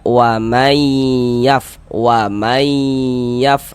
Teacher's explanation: Bunyi nun sukunnya ini dimasukkan melebur ke huruf ya. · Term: idgham bighunah